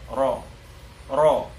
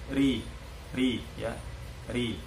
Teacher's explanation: Kalau tipis dia pangkal lidah terhempas ke bawah, jadi tidak terangkat sehingga bunyinya tipis